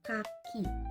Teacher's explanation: Hasilnya, ya terjadilah letupan udara yang membentuk bunyi K. Nah, bunyi K ini tidak bersuara karena pita suara kita tidak bergetar saat mengucapkannya.